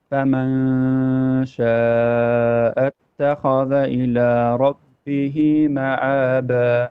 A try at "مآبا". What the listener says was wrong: Hamza, not Ain.